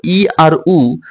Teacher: ই আর উচ্চারণ করলে দেখো মুখের মধ্যে শূন্যস্থান একদম কমে যায় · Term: সংবৃত